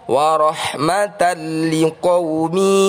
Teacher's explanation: Fathah tanwin bertemu lam adalah bacaan idgham bila gunnah, dibaca langsung atau kita masukkan fathah tanwinnya pada huruf lam.